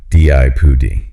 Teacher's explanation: The stress is on the first syllable with a short I.